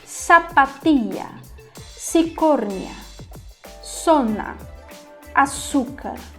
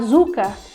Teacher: é a mesma coisa do som do s em espanhol não tem esse som vibrante sempre vai ser o som da letra S